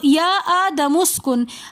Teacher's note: حمزۃ الوصل درمیانے کلام میں آنے کی وجہ سے گر جائے گا، اس حمزہ کو ہم نے نہیں پڑھنا۔ پھر اسکن میں بھی نون ساکن کے بعد حروف ہلکی میں سے حمزہ آ رہا ہے تو یہاں پر ہم نے غنہ نہیں کرنا، یا آدم اسکن پڑھنا ہے۔